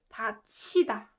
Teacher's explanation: So this ut combined with 히읗 consonant with e vowel produces ch sound.